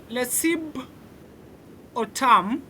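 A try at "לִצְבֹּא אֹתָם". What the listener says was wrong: It's a vet. Litziv otam. It's a vet, not a bet. It's litziv, not litzib. Litziv otam.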